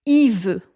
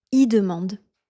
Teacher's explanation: Un autre pronom qu'on contracte souvent, c'est le pronom il. On va le prononcer tout simplement i.